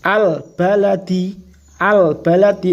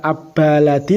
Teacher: Harus dibaca jelas alnya itu namanya al-qamariyah.